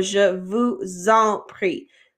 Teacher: when we have an s and a vowel together it makes that z sound so je vous zompri so that vuzon makes a z sound